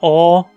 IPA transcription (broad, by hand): ɔː